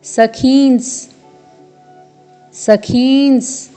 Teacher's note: फिर है पूर्ण दंत्य स, फिर पूर्ण वर्ण ख में दीर्घ स्वर है और साथ में अनुस्वार है, फिर अर्ध दंत्य स है।